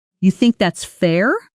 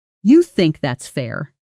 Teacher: Rising intonation invites a real answer, softer, more open. Falling intonation on the same words can sound almost confrontational, closing the conversation rather than opening it. · Falling intonation on the same words can sound almost confrontational, closing the conversation rather than opening it. This single intonation choice, rising versus falling, can be the difference between sounding curious and sounding combative, even with identical words. · Now, more skeptical, falling at the end.